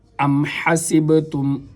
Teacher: میم کو جب دونوں ہونٹ آپس کے اندر ملائیں گے تو پھر میم ہوگی، ادا ہوگی۔ ام حسبتم، بعض حضرات اس کو ادا کرنے کے لیے حسبتم پڑھتے ہیں، ہا کی جگہ ہا کو ادا کر دیتے ہیں، یا سین کی جگہ سا کو ادا کر دیتے ہیں، یا پھر با پر قلقلہ نہیں کرتے۔